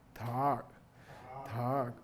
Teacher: This is the low tone voice sound with the eyebrows.